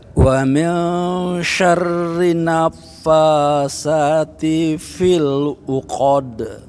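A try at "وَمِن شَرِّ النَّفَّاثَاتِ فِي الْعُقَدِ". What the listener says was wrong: Nunnya Pak, ditahan Bapak. Wa min syarrin naffatsati fil uqad. Yang lidahnya keluar dikit.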